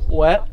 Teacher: That's a T and a th right on top of each other, basically.